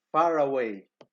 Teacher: the pronunciation is made easier as when an r is inserted between far away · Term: insertion of r